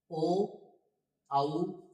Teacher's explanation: ओ औ ये कंठ और ओष्ठ से उच्चारित होते हैं। अब ओ और औ है इनका भी दो उच्चारण स्थान है, एक कंठ और एक ओष्ठ। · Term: कंठ ओष्ठौ